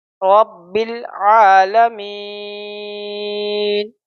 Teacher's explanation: اور یہاں پہ وقف کریں گے تو نہ نہیں پڑھیں گے، بلکہ اس کو نون کی آواز صرف نکالیں گے